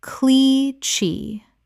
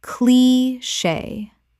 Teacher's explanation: Two syllables with the CH making a SH sound from French.